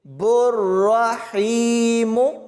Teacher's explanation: اس با کو را کے ساتھ ملانا ہے اور را کو پر یعنی موٹا پڑھیں گے، اس خالی الف کو اور اس خالی لام کو نہیں پڑھنا۔